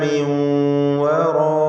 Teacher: മിൻ എന്നതിലെ സാക്കിനത്തായ നൂനിനെ ശേഷമുള്ള വാവിലേക്ക് ലയിപ്പിച്ച് മണിച്ചുകൊണ്ട് ഉച്ചരിക്കണം. ഇദ്ഗാം ബിഗുന്ന.